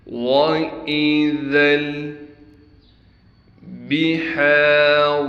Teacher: ذال کو لام سے ملائیں گے، ہا کو بالکل صاف کر کے گلے سے نکالیں گے۔ ہا کے بعد الف ہونے کی وجہ سے ہا کو ایک الف کی مقدار کھینچیں گے، را کو موٹا کر کے پڑھیں گے۔